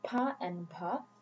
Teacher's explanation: Bangla has the aspirated stops pa and bha